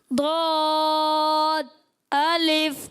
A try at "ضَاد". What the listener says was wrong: غین کے بعد ضاد کہاں ہے؟ یہ تو صاد لکھا ہوا ہے.